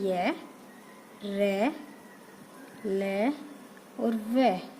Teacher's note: अंतस्थ व्यंजन यानी जिनको बोलने के लिए कहीं स्पर्श करने की आवश्यकता नहीं होती है